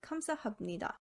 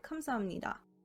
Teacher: the pronunciation instead of pronouncing biop as a hard p sound the flow is maintained by changing it to a m sound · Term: nasal assimilation